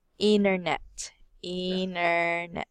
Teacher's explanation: instead of pronouncing the T sound after the N, they will remove it